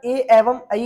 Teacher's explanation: तो जब आप ए एवं ऐ का उच्चारण करेंगे तो आप पाएंगे इसमें आपके कंठ का प्रयोग हो रहा है एवं आपकी जीभ का पिछला हिस्सा आपके तालु से टकरा रहा है